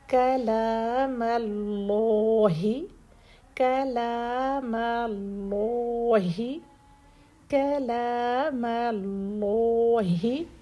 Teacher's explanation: کاف لام میم یہ تینوں لیٹر سافٹ رہیں گے، صرف آگے ہم نے لام کو ہیوی کرنا ہے. ایسا نہ ہو کہ کاف سے ہی کاف بھی ہیوی کر دیں، پھر لام بھی ہیوی کر دیں، پھر میم مول رو.